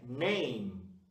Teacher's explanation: E termina com os lábios encostados, que é o som do M no inglês